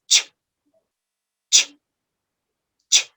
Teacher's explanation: It's a combination, if you notice, it's a combination of a stop sound that is ta with a fricative sound that is sh, ta, sh, ch. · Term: affricate sounds